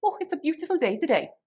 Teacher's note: With a Welsh accent, this could be, oh, it's a beautiful day today. And there would be sing-songy intonation throughout.